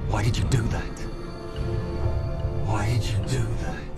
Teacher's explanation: So, did you becomes do.